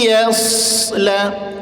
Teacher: ya tipis, sa tebal, ya